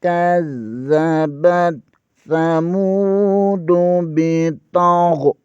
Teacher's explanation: واو کے اوپر کھڑی زبر ہے، اسے 1 الف کے برابر کھینچ کر پڑھیں گے